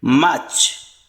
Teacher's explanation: In British pronunciation, R is silent here.